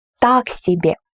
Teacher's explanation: the first word is more emphasized